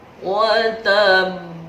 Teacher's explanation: Ada huruf qalqalah berada di akhir kalimat, namanya qalqalah kubro, jadi besar, sangat memantul.